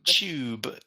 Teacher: you'll also hear it in a British accent starts with the TU so it makes a CH sound